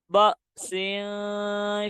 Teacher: حمزہ کو جھٹکا دے کر پڑھیں گے